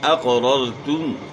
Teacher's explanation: اقررتم، اقرار کیا تم نے، تو یہاں قاف جو ہے موٹے حروف میں سے ہے، آپ نے قاف کو موٹا ادا کرنا ہے، اور پہلی را دوسری را جو ہے نا ان کو آپ نے موٹا پڑھنا ہے۔ را ساکن سے پہلے زبر ہو تو را کو موٹا پڑھنا ہوتا ہے، اور را کے اوپر زبر ہو تو پھر بھی را کو موٹا پڑھنا ہوتا ہے۔